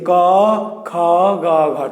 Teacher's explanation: এই জিহবার গোড়া হচ্ছে, জিহবার গোড়াটা এইখানে, এই জিহবাটা এদিক দিয়ে গিয়ে এখানে লেগেছে। তাহলে ক, খ, গ, ঘ কোথা থেকে উচ্চারিত হয়, কোথায় স্পর্শ করে, উচ্চারণ স্থানের নাম কি? কণ্ঠ। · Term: কণ্ঠবর্ণ